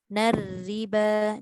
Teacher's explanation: Sikit lagi nipiskan ra tu.